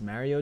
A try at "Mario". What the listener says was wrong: It's Mario Mario. There's an O there. You just don't do like New York people not pronounce O's. Like Jamaicans don't pronounce their H's.